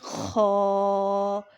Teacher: یہ ادنا حلق یعنی جو ہمارے سینے کے ساتھ حلق کا حصہ ملا ہوا ہے اس سے ادا ہوتا ہے خا